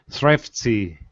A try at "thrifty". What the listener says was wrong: One more time, stronger R. Thrifty. Don't change it to thrifty, though. Keep that short I in there.